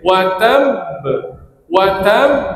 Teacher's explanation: kena tekan dulu baru keluar bunyi qalqalah